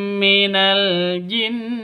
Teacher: cara bacanya masuk ke mim yang kedua disertai dengung dua ketu dua ketukan karena bacaan idgham mi idgham mimi atau idgham mis mislain ming [Musik] minal jin.